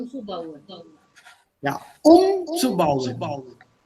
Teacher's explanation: Die Betonung liegt auf dem ersten Teil.